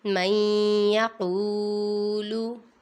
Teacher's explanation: یہاں پر ادغام ہو رہا ہے کیونکہ نون ساکن کے بعد حروف یرملون میں سے یا آ رہا ہے، ادھر گنہ کریں گے اور آگے قاف پہ واو مدہ ہے، اسے لمبا کریں گے۔